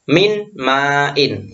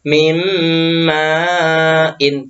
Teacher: Tapi harus memasukkan huruf mim dan mendengung. Jadi memasukkan huruf sesudahnya dan mendengung. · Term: idgham bihuna